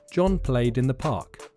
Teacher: Play ends in y, and that's a voiced sound, so played has a voiced ending.